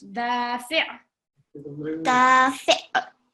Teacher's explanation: Try to get the ayn sound from the middle of your throat.